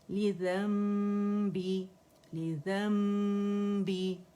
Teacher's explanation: تغفروک، تغفروک لذنبی، اور نون ساکن کے بعد با آ رہا ہے تو اقلاب کریں گے، ٹھیک ہے. یعنی نون کو میم سے بدل دیں گے اور میم کو بہت نرمی سے دونوں ہونٹوں کو آپس میں ٹچ کر کے، اور پھر ہم اخفا کریں گے، اخفا شفوی کریں گے، ٹھیک ہے.